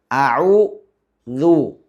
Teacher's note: ഈ ദാലിൻ്റെ മഖ്റജ് എന്ന് പറയുന്നത് നാവിൻ്റെ അറ്റം മേലെ മുൻപല്ലിൽ കൊണ്ടുപോയി മുട്ടിച്ച് പുറപ്പെടുവിക്കണം.